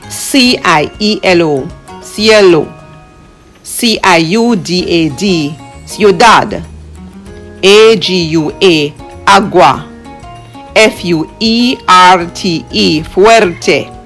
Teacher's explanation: Notice how the vowels stick together, glide, slide together in the same sound group. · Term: diphthong words